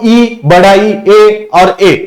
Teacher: ये जो होता है ये जीभ के आगे से प्रोनाउंस होते हैं, इसलिए अग्र स्वर